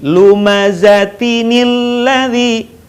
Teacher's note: Tanwin yang seharusnya dibaca an, in, un ketika bertemu dengan hamzah wasal, maka dibaca bukan lagi an, in, un, tapi dibaca ani, uni, dan ini.